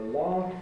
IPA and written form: lɑːf (laugh)